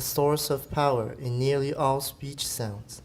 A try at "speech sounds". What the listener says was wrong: Speech 还是有点长. Speech sounds.